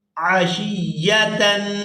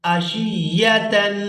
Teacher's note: اس کو پڑھیں گے قیمتن عین زبر ع شین یا زیر شی یا زبر یا عشیہ تا دو زبر تن عشیتن. یہاں تنوین پر اخفا کریں گے آواز ناک کے اندر جائے گی